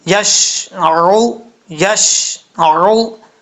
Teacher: عین پیش عو، حمزہ کی آواز نہیں آنی چاہیے